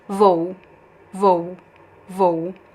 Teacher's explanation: And the second one I make it unstressed. VO goes down pronounced as U.